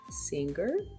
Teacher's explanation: Let your lips and teeth stay in a relaxed position and your jaw drops a little. Since the back of your tongue is blocking your throat, let the air flow out through your nose. Your voice is on, so you should feel vibration in your throat. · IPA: /ŋ/